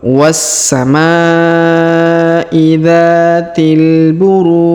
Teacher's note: yang kedua empat ataupun enam harakat Ya tinggal kita memilih baik huruf ru kita panjangkan boleh dua boleh empat boleh 6